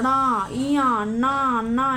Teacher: नाकों द्वारा बोला जाता है, जिसको नासिक्य व्यंजन बोला जाता है